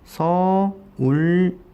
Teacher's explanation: 초성 이응이 리을로 바뀌었습니다